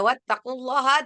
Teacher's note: lafaz Allah yang dibaca tebal karena lafaz Allah ini sebelumnya diikuti oleh baris fathah atau baris domah. Maka dibacanya tebal ya. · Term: lafdzul jalalah tafhim